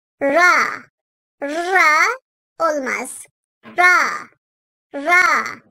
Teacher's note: Ra sesimiz dil ucunun hafif yanlarıyla birlikte üst ön dişlerin üstündeki damaktan çıkarılır.